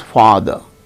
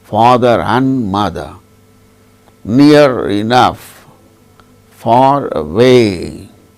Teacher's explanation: the word ending r is pronounced when it is followed by a word which begins with a vowel sound.